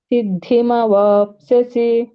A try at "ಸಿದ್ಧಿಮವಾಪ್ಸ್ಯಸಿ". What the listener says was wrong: ಸರಿ ಬಂತು